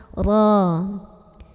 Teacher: Ra dibunyikan secara tafkhim karena ra berbaris dan kebetulan barisnya di atas fathah. Jadi bacanya tebal, posisi pangkal lidah kita keangkat ya.